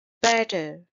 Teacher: It's two syllable word and stress is on the first syllable.